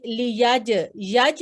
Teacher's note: جیم ساکن ہے تو یہ حروف قلقلہ میں سے ہے، اسے جھٹکا دے کے پڑھا جائے گا